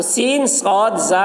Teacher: زبان کی نوک کو اگلے اور نچلے دو دانتوں کے اوپر سے لگائیں، مخرج ایک ہے